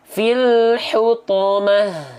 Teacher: Ketika kita bacakan ta marbutoh ini berhenti, ya, atau stop, maka ta marbutoh ini dibacanya menjadi huruf apa? Menjadi huruf H besar.